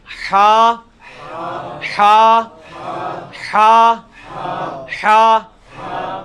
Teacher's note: اچھا جی، اس کے بعد آپ آ جائیں یہ مشکل 3 حروفوں میں سے ہا، حلوائی والا جو ہا ہے، یہ وسط حلق سے یعنی حلق کے درمیان سے نکلتا ہے. یہ کبھی آپ وہ گلے والی ٹافی کھائیں نا، وہ والی آواز ایکزیکٹ بالکل کلیئر وہاں سے جو نکلتی ہے نا، یہ ہا کا مخرج وہی ہے.